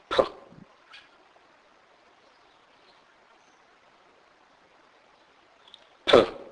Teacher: EP which means a pig pH is pronounced as p p this is the aspirated form of P sound it is never pronounced as in the English word phone it